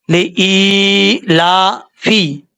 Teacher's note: اس کو ایک الف کے برابر لمبا کر کے پڑھا جاتا ہے۔ اگر آپ اس کو لمبا نہیں کریں گے تو سمجھ لیجئے گا کہ آپ نے اچھے طریقے سے نہیں پڑھا۔ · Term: مد اصلی